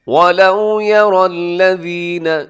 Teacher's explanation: یہاں پہ را موٹا پڑا جائے گا، یا کے بعد جو را ہے، را کے اوپر حرکت ہے